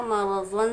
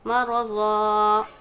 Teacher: मरज़ा, रॉ पर ज़बर है, रॉ पूर पढ़ेंगे। 2 ज़बर पर वफ़ करेंगे तो एक ज़बर और इसका एक अलिफ पढ़ा जाएगा, मरज़न से मरज़ा।